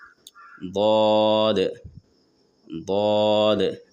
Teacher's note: زبان کو تالو میں سٹا کر موٹی آواز نکالیں گے.